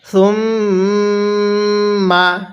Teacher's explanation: এই মিমের মধ্যে আমরা গুন্নাহ করব, কারণ মিমে নুনের তাসদিদ হলে সেখানে গুন্নাহ করা ওয়াজিব হয়ে যায়